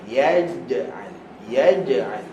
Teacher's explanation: CIC so macam mana nak hilangkan ch ch ch huruf Jim huruf Jim makhraj dia adalah tengah lidah ke langit-langit atas